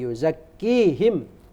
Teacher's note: Padahal itu cuman mad asli, yuzakkihim. Gitu, yuzakkihim itu mad asli ya. Tidak boleh dibaca jadi 4 harokat atau berapa harokat, tidak boleh.